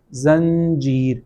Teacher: جب یہ نون کے بعد آ جائے اردو میں تو وہاں پہ نون غنہ کی آواز کے ساتھ اس کو پڑھا جاتا ہے